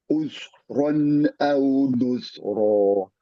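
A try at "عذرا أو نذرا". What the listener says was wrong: Oke, ini huruf Z-nya belum pas-pas benar ini. Coba pastikan. Bunyinya begini. Ujung lidah keluar, mengalir suara.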